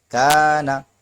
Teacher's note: کاف الف زبر کا، نون زبر نا، کانا، یہاں پر الف باریک ہوگا کیونکہ اس سے پہلے کاف بھی باریک حرف ہے